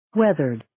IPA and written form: 'weðərd (Weathered)